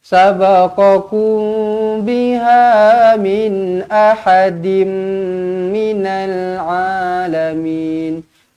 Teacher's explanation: Min ahadim jumpa dengan mim sabdu kan, terus rapatkan bibir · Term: idgham ma'al gunnah